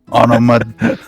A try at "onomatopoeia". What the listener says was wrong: Not quite. There's a T in there.